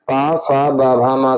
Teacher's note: पा फा बा भा मा का उच्चारण जो है ओष्ठ ध्वनियों के द्वारा होता है